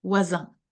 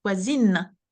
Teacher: because the E is added, the N is pronounced